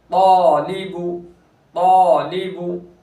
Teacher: तालिबु, तालिबु, तो अलिफ मद्दा हो रहा है, तो हुर्फ मुस्तालिया में से है, तो को पूर करेंगे और तो पूर होगा तो अलिफ भी पूर होगा